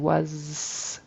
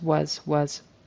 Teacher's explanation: his Z kind of turned into an S at the end